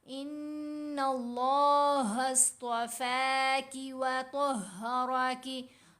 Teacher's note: तो को और रा को मोटा पढ़ना है